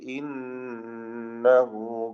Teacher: നൂൻ മുഷദ്ദദ ശബ്ദ നൽകപ്പെട്ട നൂനിനെ 2 ഹറക്കത്തിന്റെ അളവിൽ മണിക്കുക